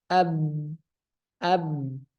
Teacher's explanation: huruf ba sifatnya jahar napas ditahan ab ab Ya jelas napas ditahan tidak keluar syiddah juga suaranya